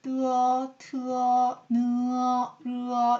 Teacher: 혀끝을 윗니 뒤 잇몸에 붙였다가 떼면서 내는 소리. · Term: 혀끝 소리